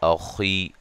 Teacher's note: میم ساکن کا اظہار ہے لام پہ مد جائز ہے اخی خا کو موٹا ادا کریں گے